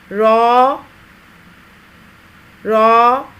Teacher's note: زبان کی نوک کی پشت کو اوپر والے دانتوں کے مسوڑوں کے ساتھ لگا کر موٹی آواز میں ادا کیا جائے گا، پر آواز میں. را را. 2 حرفی آواز ہے اس کی، تھوڑا سا کھینچ کر.